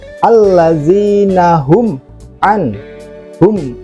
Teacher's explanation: sukun atau mim mati yang bertemu dengan huruf Ain itu dibaca izhar syafawi bacaan mimnya jelas contohnya ada di ayat alladina hum hum tanpa dengung ya alladina